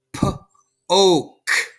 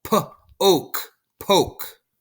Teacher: But the vowel is going to say its name. So the O, instead of saying ah, like octopus, is going to say O.